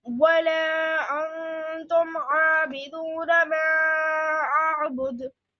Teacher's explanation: No, apply kalkula on dal.